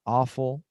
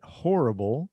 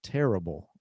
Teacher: Notice that in each of these words, the stressed syllable is the first syllable.